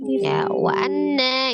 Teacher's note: ada nun tasdid itu wajib gunnah. Ya, gunnahnya akmal matakun.